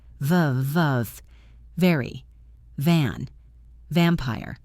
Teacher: Feel the vibration on your lip. If your lip tickles, you are doing it right.